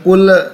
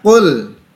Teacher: Qul, jangan dipantulkan, jangan kul, karena lam bukan huruf qalqalah